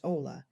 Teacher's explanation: Notice the h in Spanish is silent. So it's pronounced ola.